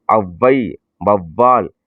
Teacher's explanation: அவ் என்பது 2 மாத்திரை, அது குறுகி ஒலிக்கும் பொழுது 1 மாத்திரை. எடுத்துக்காட்டு அவ்வை, வவ்வால் 1 மாத்திரையாக குறைந்தது. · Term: ஔகார குறுக்கம்